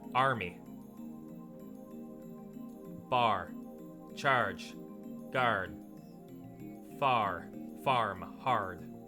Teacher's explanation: Canadians have a tendency to raise their tongues with the A in, like, army, bar, charge, and guard. Whereas in the American dialect, it's supposedly a flatter tongue.